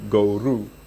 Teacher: the switch between the o and the u instead of guro they turned it to goru